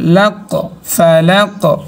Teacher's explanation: কফের আওয়াজ উচ্চগামী, ফালাক উচ্চগামী শেষের আওয়াজটা